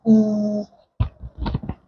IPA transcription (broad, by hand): iː